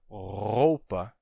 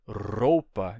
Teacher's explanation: esse som de R R da garganta em vez do R vibrado na ponta da língua